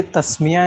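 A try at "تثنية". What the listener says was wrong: तस्निया, तस्मिया नहीं, तस्निया, नून से।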